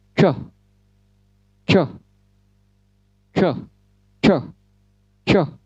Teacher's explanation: Lidah tekuk ke atas, kemudian mulut membentuk O, sedikit membulat mulut maksudnya. Lidah tekuk ke atas, mulut dalam posisi melingkar, lalu ucapkan choh, choh, choh, choh, choh, seperti itu.